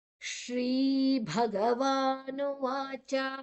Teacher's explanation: ಭ ಮಹಾಪ್ರಾಣ, ವಾ ದೀರ್ಘಾಕ್ಷರ, ಮತ್ತೆ ನುವಾಚ ವಾ ದೀರ್ಘಾಕ್ಷರ, ಕೊನೆಯದಾಗಿ ಹ್ರಸ್ವ ಚ. ಚ ಎಳಿಲಿಕ್ಕೆ ಇಲ್ಲ.